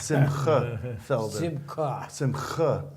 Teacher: now we have to get you to that guttural sound of a ch